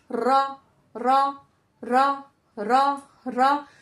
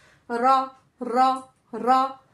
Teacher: ऊपर के तालों से जब टच होगी तो हमारा निकलेगा र हल्का सा वाइब्रेशन होता है। हल्की सी टकराव पैदा होती है।